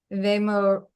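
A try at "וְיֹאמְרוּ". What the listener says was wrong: Good. Don't forget your O sound up here.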